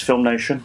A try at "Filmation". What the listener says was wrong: Filmation, not Nation. No Nation.